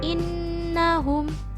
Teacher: bertasydid maka disebut bacaan ghunnah karena terdapat huruf nun bertasydid dan cara membacanya yaitu berdengung dua ketukan atau satu Alif